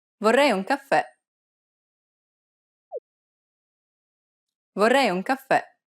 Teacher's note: since it's a downward stroke, it'll be more of an open E sound, like the E in red.